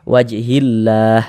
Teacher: cara membacanya itu dari hi langsung masuk ke huruf lam yang ada tanda bacanya ini wajhillah begitu. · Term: alif lam syamsiyah